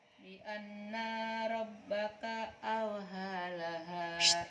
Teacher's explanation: Ha itu wastal halak, tengah-tengah tenggorokan. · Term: ha kecil